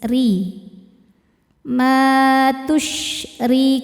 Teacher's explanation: Huruf ro dibaca tarqik karena barisnya kasrah maka bacanya tipis. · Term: tarqiq